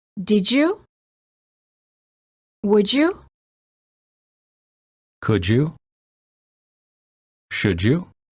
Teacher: D plus Y is usually pronounced as j, as in joke.